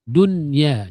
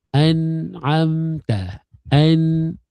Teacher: dia ada suara yang pergi ke hidung. Walaupun hukum adalah izhar.